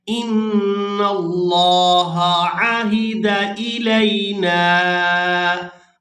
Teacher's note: आइन को इसके मखरज से सही तौर पर अदा किया करें ताकि हमजा और अलिफ के दरमियान फ़र्क हो